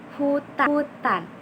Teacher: untuk ponem H ini udara itu keluar bebas lewat tenggorokan. H jadi mulutnya terbuka dan mengeluarkan udara dari lewat tenggorokan.